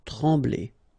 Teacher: no pronunciation of the M